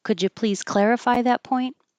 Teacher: y will make a j could you please clarify that point it's a yes no question goes up